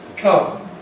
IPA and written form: kʌm (come)